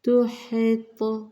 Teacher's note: تو کے اوپر جزم ہے تو ہم تھوڑا سا نمایاں پڑھیں گے قلقلے کے ساتھ